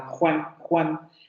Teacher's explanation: En Juan, por ejemplo, la parte posterior de la lengua va a subir hacia el velo del paladar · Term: velar